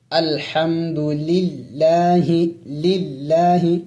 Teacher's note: لفظ اللہ سے پہلے جب زبر آ جائے، پیش آ جائے تو اس وقت لفظ اللہ کو موٹا پڑھا جائے گا. اگر لفظ اللہ سے پہلے زیر آ جائے تو پھر وہاں لفظ اللہ کو باریک پڑھا جاتا ہے